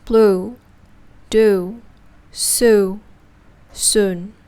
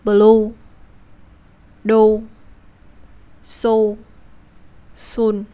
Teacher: The English Ư is produced when you slowly transition from relaxed lips to rounded lips, whereas Vietnamese Ô is produced when you cut the transition part and go right to the rounded lips.